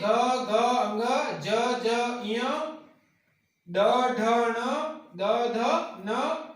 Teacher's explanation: स्वर तंत्री में कंपन होता है, नाद होती है, गूंज होती है, वो सघोष वर्ण कहलाते हैं